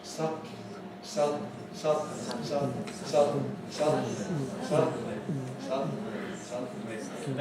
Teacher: My tongue is not moving, my soft palate moves.